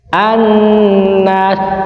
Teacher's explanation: maka Alif lamnya enggak terbaca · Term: Idam Syamsiah